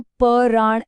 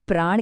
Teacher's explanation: अलग-अलग व्यंजन ध्वनियां आपस में जुड़ जाती हैं और बोली भी एक साथ ही जाती हैं एक क्लस्टर की तरह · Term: संयुक्त ध्वनि